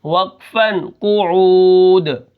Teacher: وقف بالاسکان یعنی دو پیش کو ہم ساکن کر دیں گے۔ آگے واو پیش وو، جیم واو پیش جو، وجو، ہا دو پیش ہن، وجوہن، وقفاً وجوہ۔